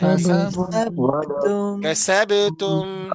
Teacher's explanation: قلقلہ کرنا ہے با میں با ساکن ہے